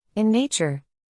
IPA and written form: ɪn ˈneɪ.tʃər (In nature)